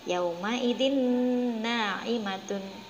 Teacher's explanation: ini tanwin bertemu dengan Nun Oh ya Jadi huruf a Maaf harokat tanwin bunyinya dimasukkan ke dalam huruf nun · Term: Idgham Bighunnah